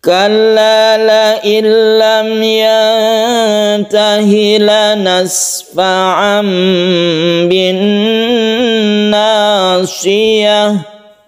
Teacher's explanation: Yantahi nun bertemu dengan ta, ini kita panjangkan, kemudian haknya ini tidak panjang ya.